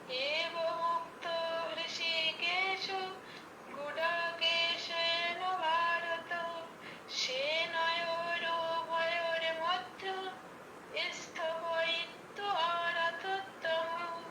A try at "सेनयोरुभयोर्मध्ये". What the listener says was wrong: মধ্য হয়ে গেছে, ভয়র মধ্য নয়, মধ্যে আছে, ঠিক আছে দিদি?